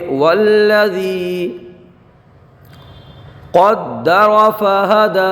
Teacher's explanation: دال کو جماؤ کے ساتھ ادا کریں گے، کیونکہ دال حروف قلقلہ میں سے ہے، اور دال کو حالت وقف میں ایسے ہی رہنے دیں گے، کیونکہ قاعدہ یہ ہے کہ کلمے کے آخری حرف پر کھڑا زبر، ساکن حرف اور حروف مدہ ہوں تو ان کو تبدیل نہیں کیا جاتا ہے وقف کے اندر بھی۔